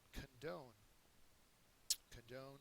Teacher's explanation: second syllable is accented it means to Pardon or to overlook